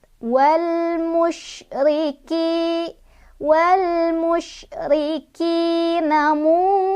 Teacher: Karena ada nun sukun bertemu dengan huruf fa. Cara bacanya, nunnya dibaca samar-samar sambil berdengung. Dan kadar dari samar dan dengungannya itu seimbang. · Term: ikhfa ausat